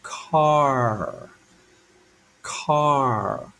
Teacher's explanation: I'm getting that hard C sound really kind like a k right in the back of my mouth car but then I'm bending my tongue to get the r